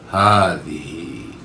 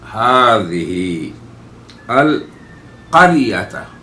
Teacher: یہ ہا ہے جو حلق کے اقصا سے نکلتی ہے